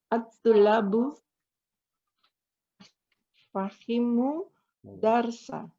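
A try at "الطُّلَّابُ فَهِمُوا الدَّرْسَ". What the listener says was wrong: iya, fahimud darsa. Langsung digabung aja Bu. wawunya sukun. At-tullabu fahimud darsa.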